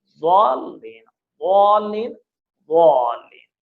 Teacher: ضاد یہاں سے ادا ہوتا ہے داہنی طرف سے یا بائیں طرف سے، اور زبان کے کناروں سے ادا ہوتا ہے اور موٹا ادا ہوگا